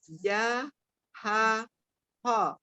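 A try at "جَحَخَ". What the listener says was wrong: Semaksimal mungkin ditahan bibirnya ya. Ya, ketika dia kho tidak maju bibirnya, ditahan. Ja, ha, kho. Kho. Kho, bukan ho. Ya, ditahan semaksimal mungkin. Awal-awal memang pasti gemeteran nih bibirnya.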